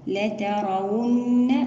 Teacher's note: لترون هنا يجب علينا تناسق حركات الفتح وذلك بمساواتها، لا ترى لترون، ونأتي بغنة النون المشددة بمقدار حركتان